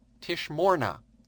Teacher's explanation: in the form tishna you can see that the accent is on the second last syllable